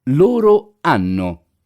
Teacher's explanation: The letter H in Italian is muted and not heard.